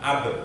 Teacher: ternyata ba itu keluarnya dari dua bibir